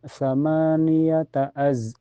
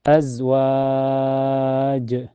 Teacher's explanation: Ada zai sukun mutlaknya dan zai mempunyai sifat sofir berdesisnya